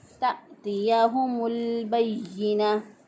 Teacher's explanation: साकिन वाले लाम को हमने पीछे वाले मुतहरिक हरफ के साथ मिलाना था, तो इसलिए मीम के साथ इसको मिला दिया। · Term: लाम साकिन